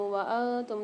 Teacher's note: نون ساکن کے بعد تا آ رہی ہے، فمال غنہ کے 15 حروف میں سے، یہاں غنہ کر کے پڑھیں گے